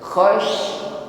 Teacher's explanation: Tafashi intisyar riha fil fami, menyebar udara, angin di dalam mulut kita. Khash bukan sekedar khas, desis di ujung lidah, bukan ya, tetapi meluas di dalam mulut kita.